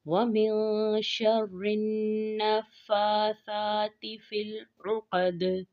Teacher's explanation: فا اور سا میں کھڑا زبر ہے اور کھڑا زبر کی مقدار جو ہے وہ 1 الف کے برابر ہے، اس لیے ان دونوں حروف کو 1 الف کی مقدار میں کھینچ کر ادا کریں گے · آگے فی العقد، عین حروف حلقی میں سے ہے، عین کی آواز کو واضح کریں گے اور قاف کو پر پڑھیں گے اور دال پر قلقلہ کریں گے